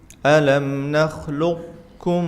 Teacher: Kalau idgham naqis, sifat qafnya masih ada. Alam nakhluqkum, sedikit ada perbedaan sedikit saja.